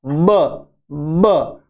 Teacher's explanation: bilabial है, दो होठ काम आते हैं